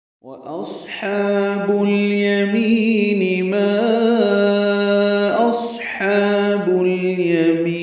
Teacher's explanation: اصحاب میں صاد پر ہے، موٹا پڑا جائے گا۔ حمزہ اقصی حلق سے ادا کریں گے، اس کی جہر کی صفت ہے